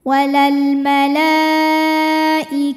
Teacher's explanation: kita panjangkan boleh empat boleh lima harakat nah tapi tidak boleh dua untuk mad wajib